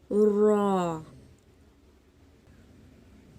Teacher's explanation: زبان کی پشت والا کنارہ اور اوپر والے دانتوں کے مسوڑوں سے ادا ہوتا ہے۔ اوپر والے دانتوں کے مسوڑوں سے۔